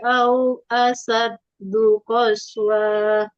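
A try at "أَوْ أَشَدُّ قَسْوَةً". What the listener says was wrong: Nggak boleh dipanjangkan. Au asyaddu qaswah. Lagi, jangan ditebalkan lam Allah kalau sebelum lam Allah itu berbaris di bawah ya, atau berbaris kasroh gitu. Khasyatillah, tipiskan.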